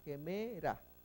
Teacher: no es una H muda, es una H aspirada